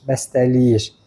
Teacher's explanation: İki dənə fərq var. Bir t-nın D-ya çevrilməsi, ə-nin i-yə çevrilməsi.